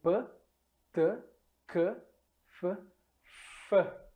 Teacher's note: não há vibração das cordas vocais quando pronunciamos as surdas